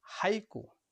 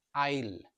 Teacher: for example আইল এখানে এই এর উচ্চারণ বাংলা আই এর মত এখানে দুটি স্বরধ্বনি একসঙ্গে রয়েছে আমরা দেখতেই পাচ্ছি আ এবং হ্রস যেহেতু দুটি স্বরধ্বনি এখানে একসঙ্গে রয়েছে তাই ইংলিশে এই সাউন্ডটিকে বলা হয় ডিপথং